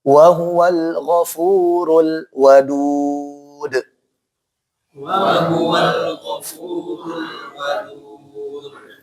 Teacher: lamnya jangan dibaca tafkhim atau tebal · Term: Tipis